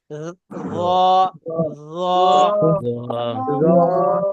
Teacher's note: জিহ্বার একদম আগা থেকে খুব আলতো ভাবে উচ্চারণ হবে।